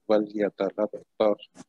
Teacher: پھر وَلْيَتَلَطَّفْ فا پہ جو ہے وہ ہمس ہوگا